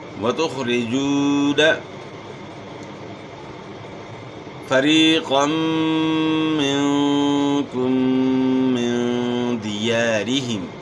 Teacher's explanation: یا ساکن سے پہلے زیر ہے، یا مدہ ہے، تو اس زیر کو آپ نے کھینچنا ہے تب یا پڑھی جائے گی. 1 الف کے مقدار کے برابر آپ نے کھینچنا ہے، یا مدہ ہے.